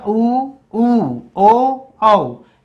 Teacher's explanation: आपके जो होंठ हैं वो व्रत जैसे गोल बन रहे हैं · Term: व्रतमुखी